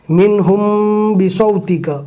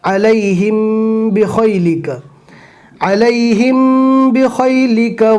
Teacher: اخفاء شفوی کا ایک ہی حروف ہے، میم ساکن کے بعد اگر با آتا ہے تو گنہ کر کے پڑھنا ہے